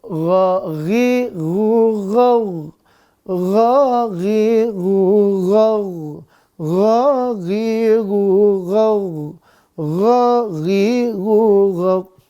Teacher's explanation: Gha ya, harus tenggorokan atas, enggak boleh ke tengah apalagi ke bawah.